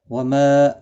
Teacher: ما الف مدہ ہے، کا الف مدہ ہے، دونوں کو ایک ایک الف کی مقدار کے برابر کھینچ کر پڑھیں گے